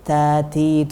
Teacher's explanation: Kemudian ta, ini ciri khasnya apa? Ada anginnya sedikit.